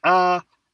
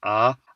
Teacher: There are two primary tones, high a and low rising a